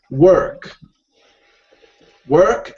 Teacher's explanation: the Americans would pronounce the r you know a lot more distinctive Lee so they would say